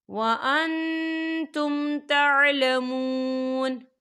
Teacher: تو یہاں پر اظہار شفوی ہو رہا ہے اور ہم اسے بنا غننے کے پڑھیں گے.